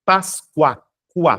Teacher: Perceba que o som do U é semivocálico, ou seja, átono, muito próximo ao U.